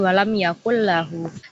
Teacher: Jadi langsung melebur ke lamnya